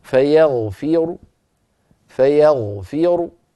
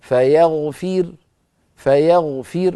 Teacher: فاقف براء مضمومه ولكن صوتها منخفض ومفخمه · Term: الروم